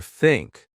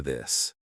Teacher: Put your tongue between your teeth. Push air out for think. Add voice for this.